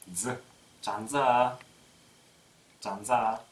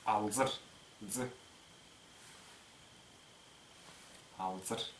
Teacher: Буква З после сонорных М, Н и Л озвучается.